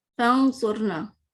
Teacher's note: نون کو چھپا رہے ہیں، اس کا صرف ہمیں غنہ نظر آ رہا ہے، اور ہم سواد بھی صحیح طرح نہیں پڑھ رہے.